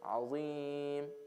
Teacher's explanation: Mad arid al-sukun, because it comes at the end of a word and becomes sukun.